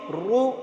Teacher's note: دونوں شکلوں میں زبر میں بھی اور پیش میں بھی پر ہوگا را، اور زیر ہو تو را باریک ہوگا